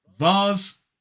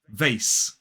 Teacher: in a modern British RP accent, we pronounce that S as Z, whereas in American English it's S, the unvoiced S